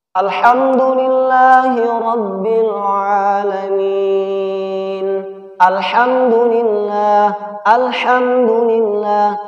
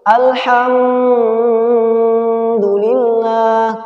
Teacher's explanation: maka huruf mim disini dibaca dengan jelas tanpa ditahan